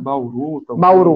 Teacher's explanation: quando u no final, depois da vogal, vai soar breve